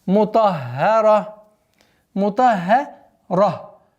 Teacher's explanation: После твердого звука идет ха. Удваиваем, мягкое произношение. А потом переходим на твердое произношение на ра.